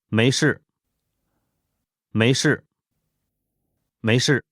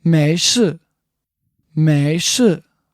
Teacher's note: The tones for this are second tone, the rising tone, 没, and then fourth tone, the falling tone, 是